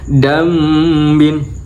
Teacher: Nah, di sini ada bacaan nun sukun atau tanwin yaitu di bacaan dambin. Nun sukun bertemu dengan ba yaitu bacaan iklab. Jadi dibaca dambin sambil mingkem ya.